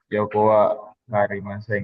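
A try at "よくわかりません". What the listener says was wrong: Enggak boleh yokuwa, enggak boleh. Karena itu dua kata berbeda. Ya, yoku. Yoku.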